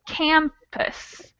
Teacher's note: The stressed syllable is the A. So we never would use the schwa sound over the A, just over the unstressed syllable.